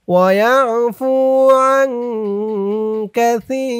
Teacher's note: এখানে ওয়াকফ করার কারণে জেরের নিচে ইয়া সাকিন এক আলিফ টানটা 3 আলিফ টান হয়ে গেছে। সি বলে 3 আলিফ টান দিয়ে এই র কে ধরতে হবে, রর নিচে 2 জের টানবেন সাকিন হয়ে যাবে, মধ্যে আরজি 3 আলিফ টান।